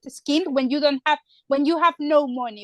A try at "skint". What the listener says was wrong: Yeah, although I'm hearing a vowel before the S there. It's just skint. skint.